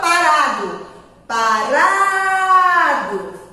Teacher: a sílaba forte é o ra